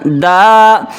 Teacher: وَلَقَدْ آتَيْنَا دَاوُودَ، دال الف، دیکھیں دال کے آگے الف ہو گیا تو الف کی مقدار دال کو کھینچیں گے